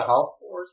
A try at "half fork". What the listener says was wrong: A howl fork? Uses the L in half.